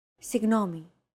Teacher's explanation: It's like a very soft, continuous, and loosely held G, almost as if you're gargling. But don't make it sound too throaty.